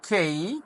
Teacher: কেই খেই শেষে একটা শর্ট ই সাউন্ড হবে